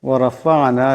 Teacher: আইন সাকিন, আওয়াজটা গলা থেকে আনতে হবে।